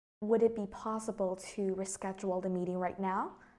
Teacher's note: your tone of voice just basically goes up and that is the rising intonation